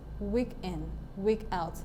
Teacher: So week is stressed, and in is not stressed. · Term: trochee